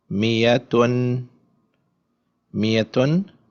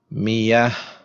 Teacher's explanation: Whenever ta like this comes at the end, it takes a sukoon and the ta becomes a ha.